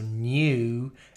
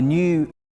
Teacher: There is the goose vowel, which is much more towards the front of the mouth. In British English, you really can hear the glide at the end of this vowel sound. So goose should end with the oo sound very slightly.